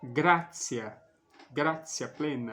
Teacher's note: esse T mais um I breve mais uma vogal tem o som de TCH, como nas palavras tchau, tchan, República Tcheca, tcheco.